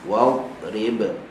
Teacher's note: sifat yang ada pada dad yang mati adalah istitalah. Tahan pada makhraj dia.